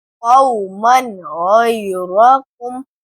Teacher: یہ کہ تنوین کی آواز کو ظاہر کر کے پڑھا گیا ہے.